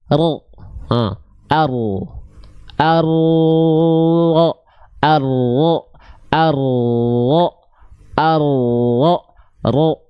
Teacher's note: untuk mengalirkan sifat tawasud, mengalir suara sedikit dari huruf ro. Jadi yang nempel tuh ini, punggung lidahnya.